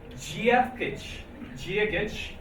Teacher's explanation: So the D changes to a J sound.